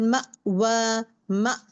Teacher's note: सांस रोक दे रही हूं यहां पे मेरा वोकल कॉर्ड को स्टॉप क्लोज कर रही हूं